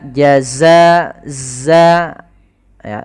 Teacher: za sifatnya adalah sifat rikhwah, yaitu mengalirnya suara, dan dia sifat syiddah, tidak ada nafas yang dialirkan tapi suaranya yang mengalir.